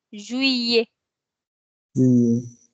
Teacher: So instead of saying Juliet or something else, we say Juillet. We don't pronounce the L as L. We pronounce it as year.